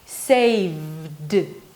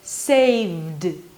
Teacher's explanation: The V is a voiced consonant, so the ed is pronounced as a D, saved. There is no vowel here, okay?